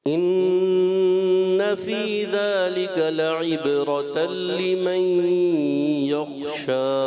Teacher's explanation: ان نون مشدد کو لمبا کریں گے, غنہ کریں گے کلب کا, اور لمن یخشى خا کی ادائیگی کلیئر کریں گے.